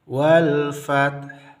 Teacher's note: Seperti ini, wal fat, ya, ta-nya kita sukunkan, ha-nya juga kita sukunkan, tapi ta sukunnya jelas, fat, sementara ha sukunnya tidak jelas, hanya kita yang mengetahuinya. Wal fath, hanya ada kedengaran sedikit sekali atau samar saja terdengar bagi kita atau orang lain.